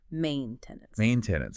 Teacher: And that final E is silent, and the T sound is often held like a stop T, not fully released